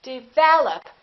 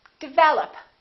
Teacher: Second syllable is stressed.